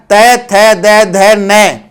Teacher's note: हमारी जीवा है वो दांत को छुएगी